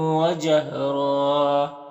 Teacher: واو ہے حروف یومن میں سے تو ادغام ناقص ہوگا، اور یہاں پر را وقف کریں گے تو ایک زبر کے ساتھ الف پڑھیں گے اور را کو پر پڑھیں گے